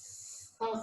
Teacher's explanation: There is a friction. Your tongue is not touching it, and there is a very small gap.